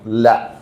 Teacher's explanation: നാവിന്റെ അഗ്രം, മുകളിലത്തെ മുൻപല്ലും തേറ്റപ്പല്ലും ചിരിപ്പല്ലും അടക്കമുള്ള പല്ലുകളുടെ ഊനിൽ. അപ്പൊ എല്ലാത്തിനും കൂടാ ഉണക്ക് തട്ടണം. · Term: ലാമിന്റെ മഖ്റജ്